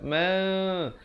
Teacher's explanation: Kemudian ma, bibir itu hampir bersentuhan saja 2 harakat. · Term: iqlab